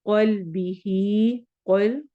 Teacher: क़ल्बिही, क़ल क़ाफ को मोटा पढ़ना है